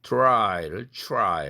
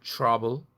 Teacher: 트가 취가 되는 사례입니다